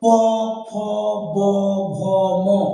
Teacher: উপরের ঠোঁট এবং নিচের ঠোঁট, এই ওষ্ঠ এবং অধর, এই দুটি ঠোঁটকে স্পর্শ করে বা ছুঁয়ে উচ্চারিত হয় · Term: ওষ্ঠ বর্ণ